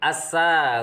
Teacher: Yang pertama yaitu asa, hukum bacaannya adalah alif lam syamsiyah, alif lam bertemu dengan sin, cara membacanya masuk ke huruf berikutnya.